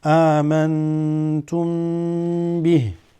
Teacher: whenever you have a meme with a sukoon followed by ba, this is also ikhfa. You're going to have to hold it.